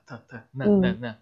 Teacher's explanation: there is a front nasal sound which is n